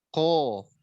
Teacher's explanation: tidak menebalkan ko ketika berharokat fathah dan dhammah sehingga menyerupai ka